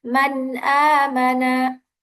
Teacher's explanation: nunnya harus dibaca jelas dan tidak boleh didengungkan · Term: izhar halqi